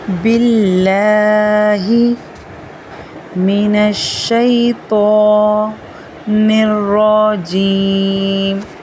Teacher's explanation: باللہ کے اللہ کے نام سے پہلے والی حرف کے نیچے زیر ہے تو یہاں پر ہم اللہ کے نام کو باریک پڑھیں گے۔